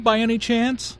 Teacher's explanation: The Rising intonation which is used in Yes No questions to confirm that something is true